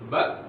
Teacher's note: Bersifat syiddah, kuat, tidak ada durasi suara yang keluar ketika dia dilafalkan. Ba, berhenti dia.